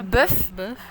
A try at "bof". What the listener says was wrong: Bof. Bof, oh. Oui, c'est un O, mais la prononciation c'est O, pas E. Tu le prononces comme bœuf, comme la viande, mais en fait c'est pas la même prononciation. C'est bof.